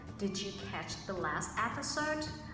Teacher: I raised my voice at the end of the sentence. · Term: rising intonation